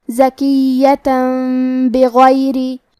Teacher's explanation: قلب کا معنی ہے بدل دینا. ہمیں تنوین کو میم میں بدل کے اور غنہ کے ساتھ یہ حکم کو ادا کرنا ہے · کلمت بغیری میں غین کو موٹی آواز میں پڑھیں گے